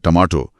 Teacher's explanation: अगर मैं अंग्रेजी का टी बोलूं जैसे टमाटो, तो जीभ मुड़ती नहीं है, वो सीधा दांतों के पीछे लगती है।